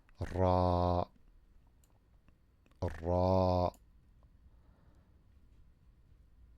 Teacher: the ra with fatha is ra. And then the alif makes it longer.